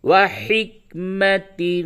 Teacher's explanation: تنوین کے بعد ثا آیا، اس جگہ پہ بھی اخفا کریں گے، وحکمت، ثا میم پیش ثم، میم زبر ما، ثم، یہ میم مشدد ہے، اس پہ غنہ ہوگا، نون، یہ نون اور میم یہ دو حروف قرآن شریف میں جہاں پہ بھی ہو اور اس پہ تشدید ہو تو غنہ کرتے ہیں۔